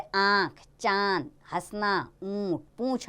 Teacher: अनुनासिक का उच्चारण करते समय नासिका और कंठ दोनों से आवाज गूंजती है